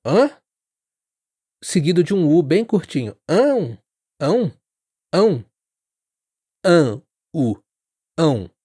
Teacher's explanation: Ã, u. A boca começa mais aberta e fecha um pouquinho no final e o som sai pelo nariz e pela boca. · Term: ditongo ão